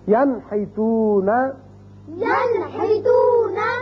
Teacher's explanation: یہاں دیکھیے نون ساکن کے بعد ہا آ گیا تو اس کو ہم ظاہر کر کے پڑھیں گے نون کے مخرج کو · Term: اظہار